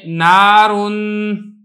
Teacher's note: نون چونکہ حروف مستعفلہ میں سے ہے لہذا نون کو تو باریک کرنا ہی کرنا ہے، نون کی وجہ سے جو الف ہے یہ بھی باریک کر کے پڑھا جائے گا۔